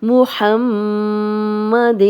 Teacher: ہا کی کلیئر آواز آئے گی، ہا نہیں بنائیں گے 2 آنکھوں والا